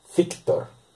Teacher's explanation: Feu es sorda, pero sigue siendo dentolabial